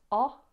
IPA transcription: ɒ